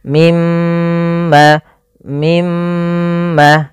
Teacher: kita menahan suara mnya sepanjang dua harakat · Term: bacaan gunah